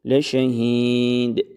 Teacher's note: Yine del harfinin ince okunmasına dikkat ediyoruz.